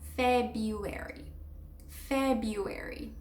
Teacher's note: Basically, the R becomes silent.